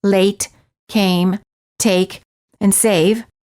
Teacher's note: take the lips are not rounded and they are relaxed and the tongue is tense moving from mid High position to high position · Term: A as in take